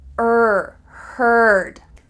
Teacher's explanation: learned there's e a but they all sound like er er this is the colored r and it's really typical in american english